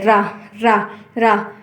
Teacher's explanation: इसमें मुख द्वार जीभ की नोक से शीघ्र ही बंद होता है और 2-3 बार खुलता है। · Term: लुंठित